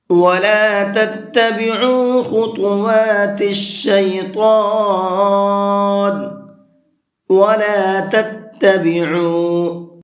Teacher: عین کو حلق سے بھی نکالیں گے اور تھوڑا سا یعنی 1 الف کے برابر کھینچ کر کے بھی پڑھیں گے۔